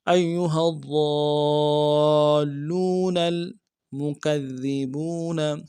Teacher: لام کو واو کے ساتھ ملانا، واو مدہ ایک الف لام میں کھینچیں گے